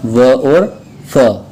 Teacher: जिसको बोलने में दांतों का और होठों का सहारा लेना पड़े उसको बोलते हैं दंत ओष्ठ्य